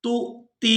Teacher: تا کو حمزہ ساکن کے ساتھ ملائیں گے تو جھٹکے کے ساتھ ادا کریں گے